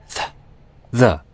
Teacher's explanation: Dental, using the upper teeth and the tip of the tongue.